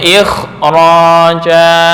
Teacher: Nah, pada kasus ini, kasus yang perkecualian ini, huruf kha tidak diturunkan menjadi tingkat 5, namun ditingkatkan setara dengan ketebalan ra, tafkhim di ra